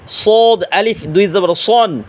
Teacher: নিচের দাঁতের আগার সাথে লাগাইয়া উচ্চারণ হবে কিন্তু মোটা আওয়াজে